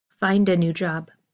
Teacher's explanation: You hear the D at the end of find pushing into the A of a new job. Find a new job.